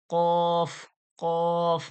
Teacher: কফ মোটা করে একেবারে গলার মানে গড়া থেকে জিহ্বার গড়া ওর তালু থেকে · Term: মোটা আওয়াজে